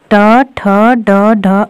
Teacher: ड वर्ण का उच्चारण स्थान मूर्धा है